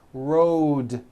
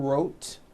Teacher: bet with an unvoiced t it's bed with a voiced d rode also has a voiced d ending road it's not wrote unvoiced it's road the whole word is voiced